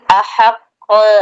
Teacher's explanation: قاف میں تھوڑی تاخیر کر کے قاف کی آواز لوٹ رہی ہے